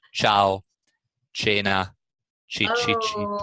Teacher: So what people do over here is they do not round their lips when they pronounce the ch sound, but I do. I try to do that because that's standard Italian, and I go ciao, cena, chi chi chi.